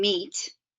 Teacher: The vowel sounds are organized on the vowel chart from the highest, most front vowel, E, as in meat. Front vowels are made with the mouth in a smile position.